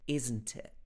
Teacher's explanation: she pronounces the first T, but not the last T. She doesn't say isn't it.